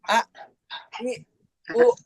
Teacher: Syiddah itu tertahan. Tertahan kayak huruf hamzah a, i, u. Nah, itu tidak ada yang mengalir, tidak ada hamsnya